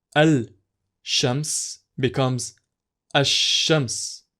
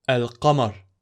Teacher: is pronounced in combination with the letter coming right after it it is acceptable to skip the lam or l sound in the definite article if a sun letter comes right after it